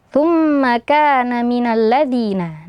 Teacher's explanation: tumma ada mim bertasydid ya jadi wajib kita dengungkan kita panjangkan